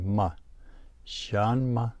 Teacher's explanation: the rising tone on the first syllable and then the neutral tone on ma